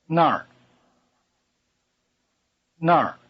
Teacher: the word Nar with a falling tone means there